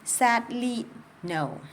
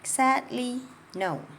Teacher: So I stressed that first syllable and I stress no. Sadly no. So stressed and then not as much stress and that's rest.